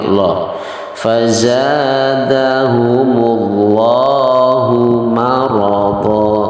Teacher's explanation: Ingat bahwa lafdzul jalalah itu kalau diawali dengan huruf yang sebelumnya berharokat fathah dan dhammah, maka hukumnya adalah di situ lam jalalahnya itu adalah dibaca tafkhim